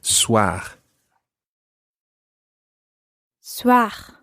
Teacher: it's a guttural R at the end